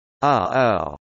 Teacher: allow syllables to begin with a phonemic glottal stop, the sound in the middle of English, uh-oh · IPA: /ʔ/